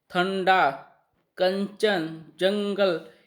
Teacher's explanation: अनुस्वार के उच्चारण में वायु नाक से बाहर निकलती है।